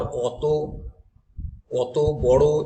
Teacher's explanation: এগুলোর ক্ষেত্রে কিন্তু অ দিয়েই উচ্চারণ হয়, ও দিয়ে নয়